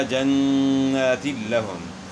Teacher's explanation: تو دو زیر کی تنوین کا لام میں ادغام ہوا بلا غنہ